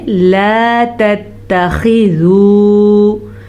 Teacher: خا کو پر پڑھنا ہے، واو مدہ کو کھینچ کے پڑھنا ہے